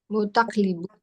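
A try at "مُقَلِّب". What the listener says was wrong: Nggak pakai taknya. Nggak pakai tak. Mukallibun. Dari sini ya, jangan lihat sini. Kalau di sini nanti taknya ikut-ikut keikutan. Nih, mukallibun.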